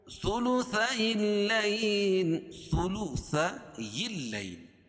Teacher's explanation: من ثلثي الليل، ثلثي الليل، یہ یا جو ہے اس کو لام میں ملائیں گے اور لام کے اوپر تشدید ہے اور سختی کے ساتھ پڑھا جائے گا۔ یا ساکن سے پہلے لام کے اوپر زبر ہے تو یا لین، اس کو نرم آواز کے ساتھ جلدی ادا کریں گے